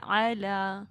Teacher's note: لام کے اوپر کھڑی زبر ہے، اس کو آپ 2 حرکات لمبا کریں، ٹھیک ہے. اور آپ یہ کس طرح کریں گے کہ اپنی 2 فنگرز آرام سے جس طرح وہ مطلب کھولے نا آپ، تو وہ اسی طرح آواز ہوگی، ٹھیک ہے.